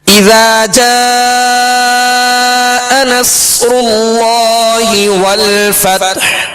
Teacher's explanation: آگے والفتح, والفتح یعنی ہا پر ہم نے سانس توڑ دیا, آواز اور سانس توڑ دیا اور وقف کیا ہم نے, ہا کو ساکن کرنا ہے لہذا ہا پر ہی اختتام ہوگا, ہا ساکنہ پر آواز اور سانس کا اختتام ہوگا. والفتح یعنی آخر میں ظاہر کریں گے, ہا ساکن ظاہر کریں گے. · یہاں مد متصل کا قاعدہ ہے لہذا 2.5 3 4 الف تک ہم اس کو دراز کریں گے. اور آگے نصر اللہ, صاد پر جزم ہے, صاد ساکن ہے لہذا اس کی آواز ہلے گی نہیں, صاد کو پر پڑھنا ہے, سیٹی کی آواز میں پڑھنا ہے.